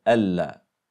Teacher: طبعا وتاره نراهما متصلتين ببعضهما على نيه الادغام كما في الا حيث تدغم النون في اللام